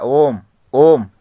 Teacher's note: ॐ का जप उच्चारण करते हैं तो क्या है इसमें तीन गुना समय लगता है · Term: प्लुत स्वर